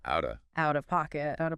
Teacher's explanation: it's a very quick, almost gentle D sound in that position. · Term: flap T